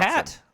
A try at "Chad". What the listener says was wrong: Chad with a D.